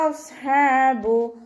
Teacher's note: സ്വാദ് ഇസ്തിഅലാൻ്റെ ലെറ്ററാണ്, തഫ്ഹീം ചെയ്തിട്ട് ഉച്ചരിക്കുക